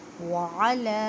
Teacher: عین کو حلق کے درمیان والے حصے سے ادا کریں، لام کو ایک الف کی مقدار میں کھینچ کر پڑھیں کیونکہ لام کے اوپر کھڑی زبر ہے۔